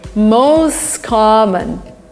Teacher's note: T disappears, the words are linked together.